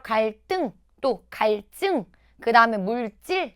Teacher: 한자어 받침 리을 뒤에 오는 첫 소리 드스즈는요. 뜨스즈가 돼요. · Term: 된소리 되기